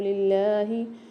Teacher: اللہ کے لام سے پہلے زیر ہے، اللہ کو باریک کر کے پڑھیں گے